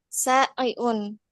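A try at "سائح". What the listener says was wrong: Saihun. Ha itu ya, bukan ain ya, tapi saihun.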